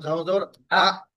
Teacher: একটা নিচ থেকে শব্দ একদম বন্ধ হয়ে যাবে বের হবে না